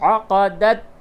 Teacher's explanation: بالکل قلقلہ نہ ہو یہاں پہ، بہت سے لوگ تا میں قلقلہ کر دیتے ہیں ، یہ حروف قلقلہ نہیں ہے یہ. عقدت ایمانکم، یا مدہ